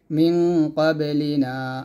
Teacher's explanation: মিন গুণ হবে, মিন ক্বাবে কলকলা